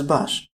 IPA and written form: baʃ (baš)